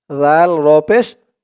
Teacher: জালের উচ্চারণটা করার সময় মুখে জিহ্বার মাথা উপরের দাঁতের মাথার সাথে লাগবে